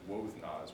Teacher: Turns out it's Wothnaz without that second vowel.